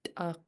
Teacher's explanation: You pinch the T, so make it sound really clicky and snappy. And then this K is back of the throat.